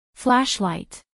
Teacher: acentuación en la primera sílaba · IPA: ˈflæʃˌlaɪt